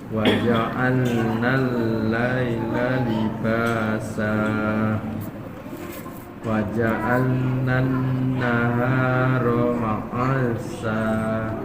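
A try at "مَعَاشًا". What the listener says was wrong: Panjangkan ainnya, ma'asya.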